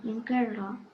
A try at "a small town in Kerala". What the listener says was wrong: Of a small town in Kerala. You have this tone pattern. The speaker in the story, like that. It shouldn't be there.